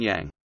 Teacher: always pronounced with rising second tone